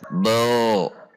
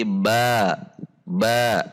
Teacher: pangkal lidah turun atau rileks sehingga suara huruf menjadi tipis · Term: istifal